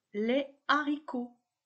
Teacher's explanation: je prononce les haricots séparément il n'y a pas de liaison · Il n'y a pas de liaison. Le H de haricot est un H aspiré. De même, au singulier, je dis le haricot et non l'haricot.